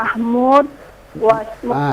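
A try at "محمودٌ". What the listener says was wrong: Hidupkan dalnya. Hidupkan dalnya. Mahmudun atau Mahmudin atau Mahmudan. Hidupkan semuanya.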